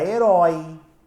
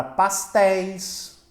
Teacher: Como a gente já falou, o ditongo é uma união de vogais e nós temos o o e o como ditongos que eu falo com a boca aberta, como ditongos abertos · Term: ditongo aberto